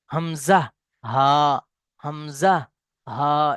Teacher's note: হামজা এবং হা এর মাখরাজ হলো কণ্ঠনালী শুরু হতে, অর্থাৎ নিচের দিক থেকে, হামজা, হা, হামজা, হা, এই নিচের দিক থেকে।